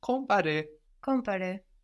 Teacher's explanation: So the M kind of gets swallowed into the nose with the vowel. You know, we think about it, but we don't get all the way there.